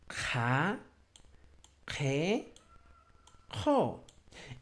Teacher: un poco de fricción se va a generar en la cavidad bucal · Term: modo aspirado